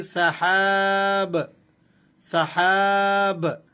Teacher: اگر ہم با پر وقف کریں گے تو اس با کی جو دو پیش کی تنوین ہے اسے ہم نے سائلنٹ کر دینا ہے، اور با کو ہم نے قلقلے کے ساتھ ادا کرنا ہے